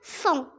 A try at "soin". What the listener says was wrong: Non, c'est pas son. S-O-I-N. Soin.